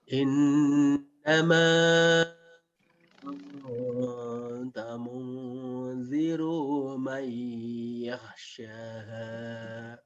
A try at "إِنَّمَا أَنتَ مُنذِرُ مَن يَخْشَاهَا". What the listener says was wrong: Baik, ra-nya pendek ya. Munziru may yakhshaha. Innama anta munziru man.